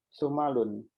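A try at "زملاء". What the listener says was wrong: Zumalau. Zumalau. Ya, itu tidak ditanwin, nanti ada keterangannya ya.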